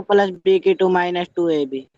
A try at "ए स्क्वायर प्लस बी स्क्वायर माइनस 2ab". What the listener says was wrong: आपने बोला तो बिल्कुल सही, मतलब मैं समझ गया कि आपको याद है, लेकिन बोलने का जो तरीका था ए की पावर A2 बोला ना आपने, क्या बोला फिर से बोलोगे? तो देखो दो तरीके से बोल सकते हैं, ए स्क्वायर प्लस बी स्क्वायर माइनस 2ab, या बोल सकते हो सर ए की पावर 2 प्लस बी की पावर 2 माइनस 2ab।